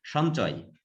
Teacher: ছ জ ঝ এটা তালব্য ব্যঞ্জন, এই জন্য তালব্য নাসিক্যতে পরিণত হয়েছে